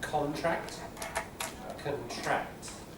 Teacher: So what we call front stress for nouns. The noun gets the stress on the first syllable, the verb on the second.